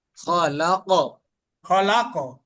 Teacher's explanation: যেহেতু কলকলার হরফ শেষ হরফ হচ্ছে, এর কারণে বেশি হবে এই কলকলাটা।